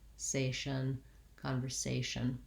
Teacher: practicing trying to make sure that it stays an S rather than a Z sound. And then lastly, the last syllable of conversation is just our usual TION ending, the short and reduced shun, where I almost have no vowel.